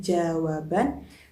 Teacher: Misalnya pada jawab ditambah an menjadi jawaban. Di situ fonem bah yang semula berada pada suku kata wab berpindah menjadi berada pada suku kata ban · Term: pergeseran fonem